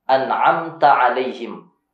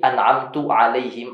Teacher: Perubahan dari harusnya fathah menjadi dhammah